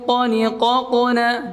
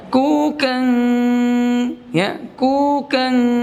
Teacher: Ya, ikhfanya tebal. Berbeda dengan kaf. Ya, kukan, ya, kukan, sama kukong, suaranya beda, tebal sama tipisnya.